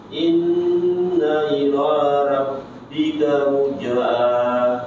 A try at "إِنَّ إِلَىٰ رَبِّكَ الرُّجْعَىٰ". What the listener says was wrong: Rabbikal muja'a. Masih belum ditahan kalu muja'a.